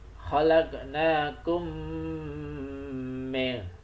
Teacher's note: mim mati bertemu dengan mim ya, itu bacanya dimasukkan, tadi mimnya dimasukkan ke mim berikutnya.